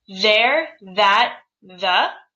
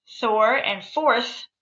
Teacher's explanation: there that the are all voiced Thor and forth are unvoiced